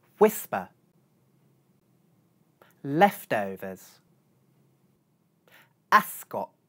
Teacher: Notice that without aspiration these consonants sound just like their voiced counterparts, /b/ /d/ and /g/. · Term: no aspiration